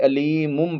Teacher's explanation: اس کے بعد با ہے تو نون کو میم سے بدلا ہے